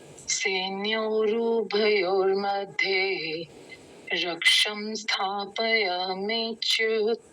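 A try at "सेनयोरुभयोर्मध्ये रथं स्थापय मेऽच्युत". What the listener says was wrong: एक तो रथम को आपने रक्षम बोला, रक्षम नहीं रथम है वो।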